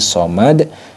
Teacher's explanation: jadi dalnya ini yang awalnya somadun jadi Somad kemudian dipantulkan diqalqolahkan